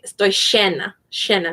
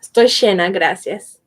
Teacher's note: the double L or the Y is pronounced like an SH in Uruguay